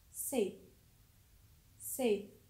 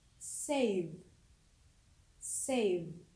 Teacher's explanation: Lalu untuk bunyi V pada save, karena sound V di sini adalah weak frictions, so the vowel before V sound is long.